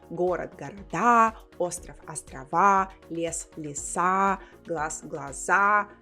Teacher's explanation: So there is an entire category where the stress was in the middle, especially when it's a short word. And then when it's a plural form, the stress travels all the way to the end. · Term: stress shift